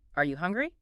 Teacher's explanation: For a yes or no question, my voice goes up.